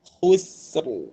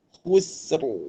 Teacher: Fa lafi khusr. Khusr, kha baris depan disempurnakan. Sin nipis